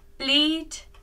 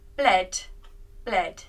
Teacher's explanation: In the next pattern, in the present form, we use the long E sound, E, but in the past forms, we use the short E sound, E. Bleed, bled, bled.